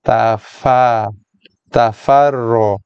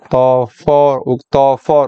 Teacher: Kalau for, fa sebelum ro kita dah tebal sekali. Yang tebalnya hanya pada huruf ro. Ta, fa masih nipis. Fa bukannya for.